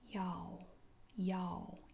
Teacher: you pretty much drop the L for the most part you just drop it